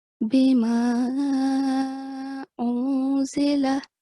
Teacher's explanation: in al-maddul munfasil, we elongate for 4 seconds